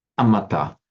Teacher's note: Pali does not have this r sound, this vocalic r. So it's replaced by another vowel instead, sometimes replaced by an a, sometimes by an I, and sometimes by an u.